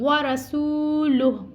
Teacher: ورسولہ, اب یہاں پہ بھی ہم نے کیا ہے گول تا وقفے تام کی علامت ہے اور یہاں پہ رکنا ہے, ٹھہرنا ہے, تو آخری حرف کو ساکن کرنا ہے اور آخری حرف سے پہلے کوئی قاعدہ نہیں لگ رہا, تو یہاں پہ کوئی مد نہیں آئے گی اور ہا کو لام کے ساتھ ملا کے پڑھنا ہے